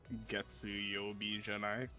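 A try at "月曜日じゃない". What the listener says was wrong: Very good. Fantastic.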